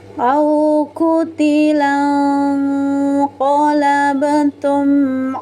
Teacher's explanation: Kemudian pantulkan. Pantulannya ringan saja kemudian pantulannya dilepas jangan ditahan. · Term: qalqalah sugra